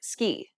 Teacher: this is an unaspirated sound, meaning there shouldn't be a burst of air when you pronounce this consonant